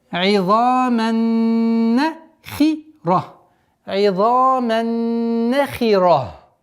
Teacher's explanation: Здесь у нас полноценная назализация с полноценной ассимиляцией. Удержание нуна в размере двух огласовок, после которой фатха.